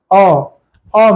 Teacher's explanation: भी निकाल सकते हैं जैसे अ अ में इस तरह से होठ खुल जाते हैं गोल नहीं बनता